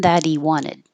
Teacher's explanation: The T changes to a D and the H in the he disappears completely. So that he sounds like that D. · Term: H deletion